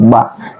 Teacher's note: Ba adalah huruf asyafatain, ya, dua bibir ba. Dia bertasdik, berarti ada penekanan, ya.